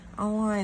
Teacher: Online là nhấn âm 2 ha.